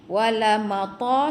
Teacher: ada qalqalah di hujung ya pada huruf ta. Qalqalah kubra.